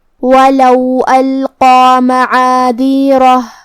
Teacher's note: قاف کی ادائیگی زبان کے جڑ اور تالو کے نرم حصے سے ہے. قاف حروف التفخیم میں سے ہے، تو ہمیں یہ حرف کو موٹی آواز میں ادا کرنا ہے، جو کہ اس پہ کھڑا زبر ہے، تو یہاں مد الف ہوا. · کلمت القا کی شروعات میں یہاں الف ہے اور یہ حمزۃ قطع ہے، تو ہم حمزہ کو ظاہر کریں گے. حمزہ کی ادائیگی حلق کے نیچے والے حصے سے ہے. یہاں حرف القاف ہے، قاف کی ادائیگی زبان کے جڑ اور تالو کے نرم حصے سے ہے.